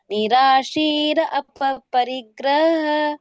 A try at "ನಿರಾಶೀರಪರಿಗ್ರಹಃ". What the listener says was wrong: ನಿರಾಶೀರ ಪರಿಗ್ರಹ. ಪರಿಗ್ರಹ ಅದು ಒಂದ್ ವರ್ಡ್ ಆಗಿ ಬರ್ಬೇಕು.